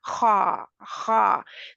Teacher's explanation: हर्फ है तो जुबान की जड़ पीछे से उठी हुई है जुबान की जड़ जब पीछे उठी है तो थोड़ा इसका मखर टाइट हो गया थोड़ा सा छोटा हो गया · इसके लिए ज़ुबान की जड़ का पीछे से उठाना बहुत ज़रूरी है, वरना खा जो है वो बारीक रह जाएगी। अगर ज़ुबान नीचे रह गई तो खा बारीक होगी। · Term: मोटा हर्फ